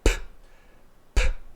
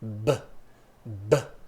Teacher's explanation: Ou seja, o P e o B, esses 2 sons, eles são produzidos exatamente no mesmo lugar. A diferença é que o P, ele é voiceless, não vibra as pregas vocais, e o B, ele é voiced, ele vibra as nossas pregas vocais.